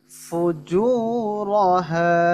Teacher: জু এক আলিফ, র মোটা, হা এক আলিফ।